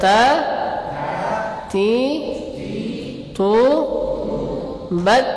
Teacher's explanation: Jadi tetap ada hamasnya ketika dia berharokat, tapi kalau dia sukun maka lebih nampak lagi hamasnya.